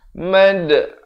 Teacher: Ha pedas. Di tengah kerongkong. Makhrajnya.